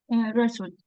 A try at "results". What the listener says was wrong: Aquí es una de estas palabras donde la U es abierta. difficult, result. La U como en la palabra up. Up. Esto no es result.